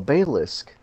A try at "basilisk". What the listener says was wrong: There's an S in there, you goober. You know how to read?